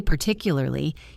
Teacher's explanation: The next time you say particularly, you will feel the stress land naturally on partic, and the rest of the word will follow